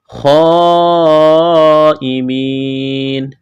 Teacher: لمبی مد ہے، کھینچنا ہے، خا کو موٹا کرنا ہے، یا مدہ ہے، ایک الف کے برابر کھینچنا ہے.